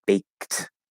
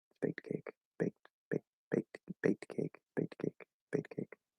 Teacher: Of course, for those of you who don't know, it's a T in baked because it ends with ED, but when we have an ED ending and the previous sound is voiceless, like K, it's a voiceless consonant sound, meaning we don't vibrate our vocal cords. That's going to change the ED ending into just a T sound